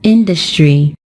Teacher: It is stressed on the first syllable, and we pronounce it as industry.